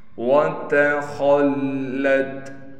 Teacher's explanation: تا کو باریک کر کے پڑھیں گے، تا کے بعد خا ہے، خا موٹے حروف میں سے ہے، خا کو موٹا کر کے پڑھیں گے۔ خا کے بعد لام پر تشدید ہونے کی وجہ سے لام پر ٹھہراؤ کیا جائے گا۔